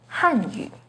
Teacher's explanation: The pinyin and tone for Hanyu is with the fourth falling tone on Han